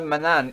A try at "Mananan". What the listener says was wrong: Mananan. Mananan. Yes, you keep forgetting a syllable.